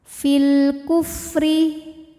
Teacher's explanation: karena alif lam menghadapi huruf qamariah yaitu Kaf maka lam dibaca dengan jelas · alif lam menghadapi huruf qamariyah yaitu kaf, maka lam dibaca dengan jelas. Fil kufri, huruf ra dibunyikan secara tarqiq karena berbaris kasrah, maka ra dibaca dengan tipis. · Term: alif lam Qariah, alif lam qamariyah